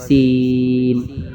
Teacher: زبان اندر رہے گی، سیٹی کی آواز آئے گی سین میں